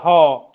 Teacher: स्वर तंत्र जो है हमारे मुख में, सीधा वह स्वर तंत्र से ही वह ध्वनि निर्गत होती है, इसीलिए उसको कहा गया है स्वर तंत्रीय ध्वनि।